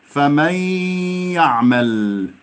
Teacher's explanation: شرح التعريف: إذا وقعت النون الساكنة أو التنوين قبل حروف الإدغام فإنهما يدغمان فيها بحيث يصير الحرفان المدغم والمدغم فيه حرفا واحدا مشددا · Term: إدغام بغنة